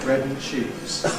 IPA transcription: ˈbred n̩ ˈʧiːz